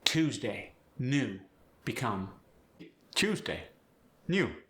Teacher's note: There's the strong Y glide.